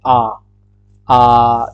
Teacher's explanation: अब आता है अब आती है बात विवृत्त की। विवृत विवृत होता है जिसमें कि मुख लगभग पूरा खुला हो इंसान का